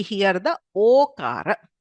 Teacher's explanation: So effectively we hear the okara, right? So the visarga becomes o. So bharataha becomes bharato. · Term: uttva